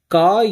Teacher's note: ஒலித்தலே ஆ என்னும் எழுத்து ஒலிக்கிறது உன்னும் எழுத்தை ஒலிக்கும் பொழுது இதழ்கள் குவிகின்றன நாக்கின் முதற்பக்கம் மேல் அன்னம் ஒட்டும் பொழுது கா என்னும் எழுத்து பிறக்கிறது